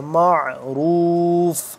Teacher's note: اربعۃ اشہر وعشرا فَإِذَا بَلَغْنَ أَجَلَهُنَّ فَلَا جُنَاحَ عَلَيْكُمْ فِيمَا فَعَلْنَ فَيَا مَدْزِرْ فِي أَنفُسِهِنَّ، ان پہ کریں گے اخفا، ہن پہ کریں گے غنہ، انفسہن بالمعروف میم عین زبر معروف، را موٹا، عین کو حلق کی آواز سے اور کھینچاؤ پیدا کر کے ادا ہوگا، کھینچاؤ پیدا ہوتا ہے تو تبھی کھینچ کے پڑھنا ہوتا ہے، معروف۔